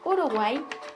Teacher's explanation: En cuanto a los triptongos, debemos saber que es el conjunto de 3 vocales en una misma sílaba y se constituye de la siguiente manera: una vocal cerrada, una abierta y otra cerrada, como en el ejemplo Uruguay.